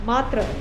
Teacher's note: the Sanskrit word matra with a long A and a soft T